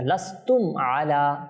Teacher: মিম সাকিনের পর আইন এসেছে এখানে ইজহারে শাফাবি হবে অর্থাৎ কোন গুন্না হবে না কিচ্ছু হবে না লাস্তুম আলা কেমন কোন গুন্না না কেনা ইত্যাদি